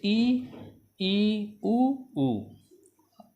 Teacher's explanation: मुंह लगभग बंद रहेगा, यानी कि बहुत कम मात्रा में खुलेगा, थोड़ा सा खुलेगा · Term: संवृत